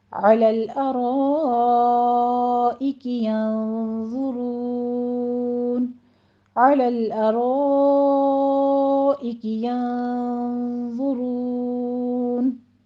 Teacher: آیت نمبر 35 دیکھ لیں، عَلَى الْأَرَائِكِ يَنظُرُونَ، عَلَى الْأَرَا میں پیچھے والی ہی تطبیق ہے، را کو مفخم پڑھتے ہوئے اوپر آپ فتح قائمہ ہیں، را کو مفخم پڑھتے ہوئے مد متصل واجب ادا کریں گے، 5 کاؤنٹ کرنا ہے یہاں پہ۔ ینظرون میں نون ساکن کا قاعدہ اخفا کی ہے، وا کو پر پڑھیں گے، ینظرون، را بھی مفخم پڑھی جائے گی، آگے مدارس وقفی کر لیں گے، علی الارائک ینظرون، علی الارائک ینظرون، اور تختوں پر بیٹھے ہوئے ان کا حال دیکھ رہے ہوں گے۔